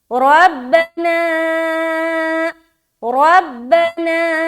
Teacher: मद कर रहे, 3 से 4 अलिफ खींच रहे, रा को मोटा रखना है